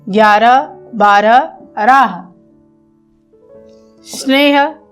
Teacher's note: बच्चों ह का उच्चारण हम लोग करते समय किन किन बातों का ध्यान रखेंगे, देखिए। ह सघोष है, पर शब्द के अंत में सामान्य रूप से इसका अघोष उच्चरित हो जाता है।